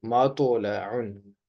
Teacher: توا کی آواز موٹی ہوتی ہے اور جھٹکے والی، یعنی اس کو ابھار کر پڑھیں گے